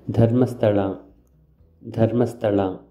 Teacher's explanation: This is aspirated da sound used to write Sanskrit words.